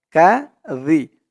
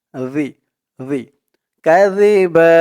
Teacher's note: জালের উচ্চারণটা একদম নরম হবে জিহ্বার মাথা ওপরের দাঁতের মাথার সাথে লাগবে